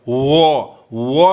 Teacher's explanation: वो में देखिए ना होठ सटता है ना जीभ कहीं सटता है। इसीलिए इसको माना गया है य, र, ल, वो, इस चारों को माना गया है अंतस्थ व्यंजन।